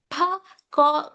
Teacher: when you say p, you are using two lips. Both the lips touches. Here, b. This comes under bilabial sounds.